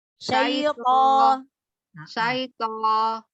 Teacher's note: Huruf to memang yang keluar vokalnya huruf o, tapi tidak boleh memonyongkan bibir